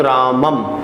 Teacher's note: किसी शब्द के अंत में अनुस्वार का प्रयोग होता है तो इस अनुस्वार का जो उच्चारण होता है वो उच्चारण म के समान सुनाई देता है